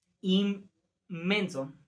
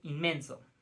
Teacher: la n se asimila a una m por la influencia de la m siguiente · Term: asimilación